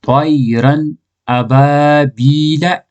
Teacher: ساکن یعنی جزم والا نون کے بعد حروف حلقیہ میں تو نون کو ظاہر کر کے بلا غنہ کے جلد پڑھیں گے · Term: اظہار